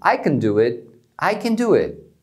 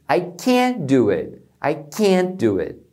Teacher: quando é afirmativo, eles reduzem o can